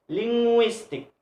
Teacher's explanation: So linguistic, the stress is the second syllable, linguistic.